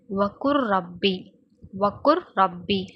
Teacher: லாமும் ராவும் தோற்றத்துல மாற்றமாதான் இருக்கும். ஆனா ஓதும்போது அதாவது சேர்த்து ஓதும்போது ஒரே ஒரே சப்தத்தைதான் கொடுக்கும். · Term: முதஹரிபைன், முத்தகாரிபைன்